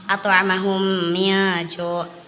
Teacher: Apabila ada mim sukun bertemu dengan mim, maka cara membacanya ditekan 2 harokat.